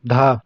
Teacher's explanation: दंत वर्तस्य महाप्राण घोष व्यंजन वर्ण का उदाहरण कौन सा है